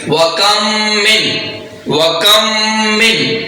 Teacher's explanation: میم ساکن کو میم متحرک میں مدغم کر کے پڑھیں گے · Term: ادغام شفوی